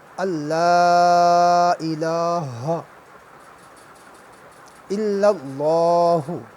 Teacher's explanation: لام کے بعد الف ہے اور الف کے اوپر مد بھی ہے، اس مد کو مد منفصل کہتے ہیں۔ اس کو جو ہے 1 تا 3 الف لمبا بھی کرتے ہیں۔ تو اس کے بعد لام کے اوپر کھڑا زبر ہے، اس کو بھی 1 الف لمبا کرتے ہیں۔